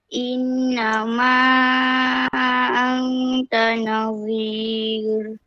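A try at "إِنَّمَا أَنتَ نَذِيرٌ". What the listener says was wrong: baca tadi tu hampir kepada huruf zod. Nazir. Jangan baca zod kan. Dia zal. Nazir. Lidah atas gigi. Tengok Ustaz punya lidah. Zir. Innama anta nazir. Okey, kalau zir dia akan jadi huruf zod.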